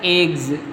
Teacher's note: इग, E double जी एग, एग्स, एग्स पढ़ते हैं, लेकिन उच्चारण क्या होता है इसका, एग्स, मतलब ज होता है, जो कि हल्का सा उच्चारण करोगे तो स के रूप में दिखता है हम लोगों को, तो एग्स इसका उच्चारण होता है।